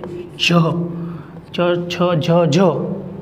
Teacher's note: आपणे च बोलीए एटले आपणी जीभ आपणा ताळवे चोटे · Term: तालव्य